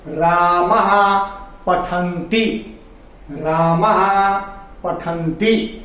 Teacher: तो ए के बाद है की ध्वनि, आ के बाद हा की ध्वनि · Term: विसर्ग